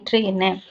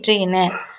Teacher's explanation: மேல்வாய் நாக்கின் வந்து நுனி மிகவும் பொருந்துவதால் பிறப்பது